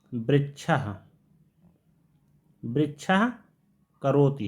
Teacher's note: ये जो जिह्वामूलीय ध्वनियाँ हैं इनका उच्चारण आधा का और आधा खा करके होता है।